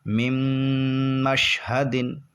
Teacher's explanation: یہاں پر گنہ ہوگا کیونکہ نون ساکن کے بعد میم آ رہا ہے اور میم حروف یرملونہ میں سے ہے، اور گنہ بھی ہوگا اور ادغام بھی ہوگا، دونوں ہوں گے، اور را اور لام ہوتے تو گنہ نہیں ہوتا، صرف ادغام ہوتا، لیکن 4 حروف آئیں گے تو ادغام کے ساتھ ساتھ گنہ بھی ہوتا ہے۔